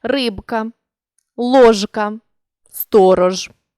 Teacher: вимовляємо дзвінкі приголосні у цих словах виразно і чітко не оглушуємо їх